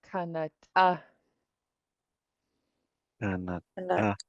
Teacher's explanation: so we have a pinched T. We need to sound really sharp on that one. And then we have a little high tone short A after.